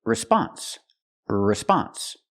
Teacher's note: The stress is on the second syllable, not the first. So we have to say response.